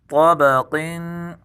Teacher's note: طا کو پر پڑھیں گے، قاف کو بھی پر پڑھیں گے